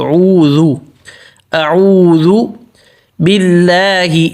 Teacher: اعو حمزہ پتلا، اعوذ پہ ہونٹ گول